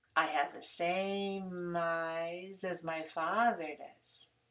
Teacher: when I use the auxiliary at the end, it always has to be shorter and lower and weaker than father.